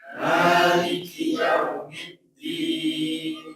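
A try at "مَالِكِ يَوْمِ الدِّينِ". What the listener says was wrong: Ditahan ya. Yaumiddin. Ya dulu, jangan yu. Nanti kesannya kalau yu itu otomatis monyong ya. Maliki yaumiddin. Tapi maliki yau. Maliki yaumiddin.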